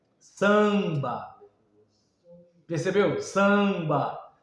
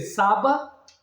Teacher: Você tá usando um a com som nasal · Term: a nasalizado, A nasalizado